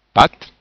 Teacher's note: le son a qui est un peu plus euh un peu plus long à cause de l'accent circonflexe